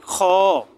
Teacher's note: গলার শেষ ভাগ থেকে একটু শক্ত করে বের হবে খ